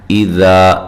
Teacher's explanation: لام اور میم کو لمبا نہیں کرنا، زبر زیر پیش کو لمبا نہیں کیا جاتا. اذا ذال کو نرم پڑھنا ہے، الف مدہ ہے